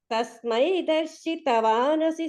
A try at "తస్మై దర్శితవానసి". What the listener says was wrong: Only stress విషయంగా మాత్రం తస్మై దర్శితవానసి అని అంటున్నారు కదా, అలా కాకుండా తస్మై దర్శితవా డా దగ్గర స్ట్రెస్ ఉంటే బాగుంటుంది. దర్శితవా తా ఆ తా కింద కాకుండా, అంటే అది అది విషయం కాదండి, అది దోషంకి సంబంధించింది ఏం కాదు. అంటే దానివల్ల ఏమవుతుందంటే ఆ తవానసి అనేది ఒక పదమేమో అన్నట్లు భావన కలుగుతుంది.